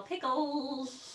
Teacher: the tongue comes up to the roof of the mouth and spreads out so when it does this the air that's coming out of your mouth shoots out the sides instead about the center of the mouth so I'm assuming that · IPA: /l/